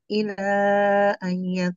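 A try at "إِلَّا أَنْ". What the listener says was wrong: illa tasydid.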